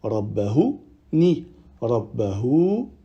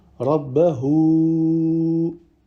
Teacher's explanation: On allonge 4 ou 5 temps, vu qu'il y a le petit waw avec la vague au-dessus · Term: silah kubra